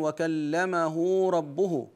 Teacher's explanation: وكلمه ربه وقعت بين متحركين فهنا نصلها بواو لانها مضمومه